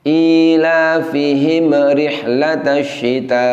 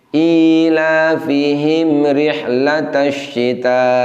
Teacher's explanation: mim sukun seharusnya tidak boleh dipantulkan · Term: Idhar syafawi